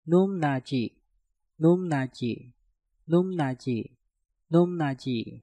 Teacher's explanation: Num diakhiri dengan piup, setelah itu diikuti kata nat yang diawali dengan nieun. Nah, maka piupnya kita rubah menjadi suara mieum.